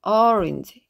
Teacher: 완전 어도 아니고 그렇다고 완전 오도 아니에요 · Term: C꺼 발음